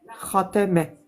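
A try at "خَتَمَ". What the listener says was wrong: Khotame. Khotame. Le kha est emphatique. Kha. Khotame.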